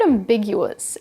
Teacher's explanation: The stress is on the second syllable, big